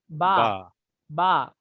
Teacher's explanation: बा बंद होठों के गीले हिस्से से